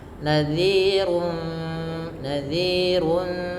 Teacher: Karena bertemu dengan fa yang mana fa termasuk salah satu huruf ikhfa maka suaranya disamarkan kepada fairum. langsung kepada makhraj huruf fa yang ada di bibir gigi atas menempel dengan bibir bawah